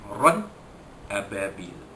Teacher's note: Ran ababil, ra 2 di atas ran bertemu dengan hamzah pada ababil, ya, izhar halqi, ya, tanwin bertemu dengan hamzah, ya, jadi tanwin itu dinyatakan bunyi tanpa dengung